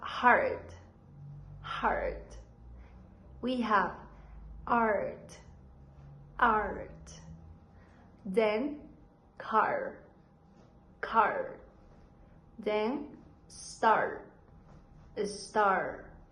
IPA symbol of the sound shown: a: